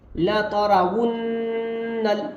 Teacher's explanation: یہاں پر را کے بعد واو ہے، ہونٹوں کو تھوڑا گول کر کے پڑھیں گے